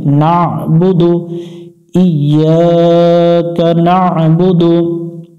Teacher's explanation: এখানে আইনটা সুন্দর করে উচ্চারণ করতে হবে, গলা চেপে